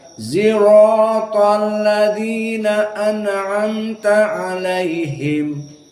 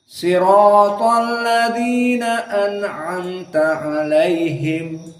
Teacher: sebagian dari kabilah tidak bisa membaca sirat tapi dibaca dengan ismam baina zai dan shad